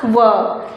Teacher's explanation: फिर बात करते हैं उच्चारण स्थान के आखिरी भेद, जो कि हमारे पास है दंतोष्ठ। दंत और ओष्ठ से उच्चारित होने वाली ध्वनि